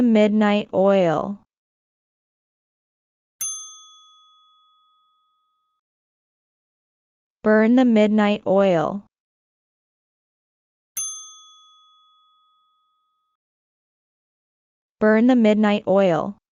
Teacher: The word midnight is stressed on the first syllable.